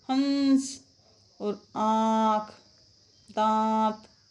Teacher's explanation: इसमें नाक और मुख दोनों से हवा निकलती है अनुनासिक में